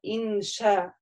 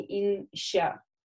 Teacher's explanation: это не «щ», да, это мягкая «ша», а не «ща»